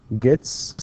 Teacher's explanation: the t is considered voiceless, meaning that the vocal cords do not vibrate